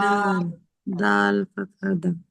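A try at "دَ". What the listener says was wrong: আর একটু টেনে, দাল ফাতহা দা।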